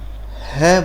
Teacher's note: हमारी जीभ किसी भी भाग को स्पर्श नहीं करती और ध्वनि कंठ से उत्पन्न होती है, इसलिए है का उच्चारण हम कंठ से करते हैं।